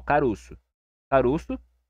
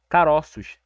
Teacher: o timbre ficou bem mais forte esse som ficou um pouco mais agudo digamos assim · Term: plural metafônico